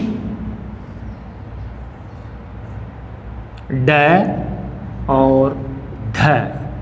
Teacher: उत्क्षिप्त ध्वनियाँ अर्थात वे ध्वनियाँ जिनका उच्चारण करते समय हमारी जीभ झटके के साथ गिरती है और झटके के साथ ही उठती है। ऐसी ध्वनियाँ उत्क्षिप्त ध्वनियों के नाम से जानी जाती है, जिनकी संख्या 2 मानी गई है।